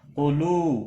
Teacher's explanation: قاف مستعلیہ ہے موٹا پڑا جائے گا